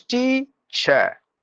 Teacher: when you say the word teacher it is teacher no sound for the letter R